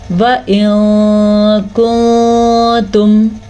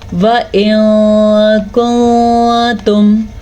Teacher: ہمیں نون ساکن کی آواز کو چھپا دینا پڑتا ہے اور نون تنوین کو بھی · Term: اخفا